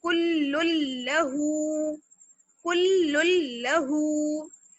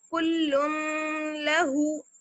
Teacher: तो अब देखिए आपके तनवीन के बाद यहाँ पर लाम आ गया और लाम पर तशदीद भी है, तो हम डायरेक्ट लाम को लाम से मिलाएंगे, कुल्लुल्लहु, कुल्लुल्लहु। तनवीन की साउंड बिल्कुल खत्म हो गई, या नून की जो साउंड थी वो बिल्कुल खत्म हो गई